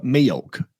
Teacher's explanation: Southern, sometimes people go milk, like it's two syllables